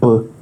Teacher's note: the sound B is considered a voiced bilabial stop.